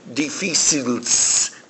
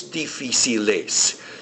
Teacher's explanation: we can't just put an S on the end of it we have to put an e s the spacer vowel to separate the s from the L Sound